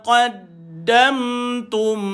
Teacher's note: jumpa mim sukun pun kita bacakan dia jelas dia mim dan dia ada sifat rakhawah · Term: izhar syafawi